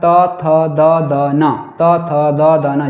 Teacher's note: इन वर्णों को उच्चारण करते समय जो जीभ है जो हमारी जीवा है वो दांतों को स्पर्श करती है। · जो आपकी जीवा है वो दांत को स्पर्श करती है, कहीं ना कहीं उसको टच करती है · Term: त वर्ग